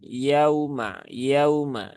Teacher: Jadi cukup tunaikan saja satu harokat dari waw yang sukun. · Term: harfulin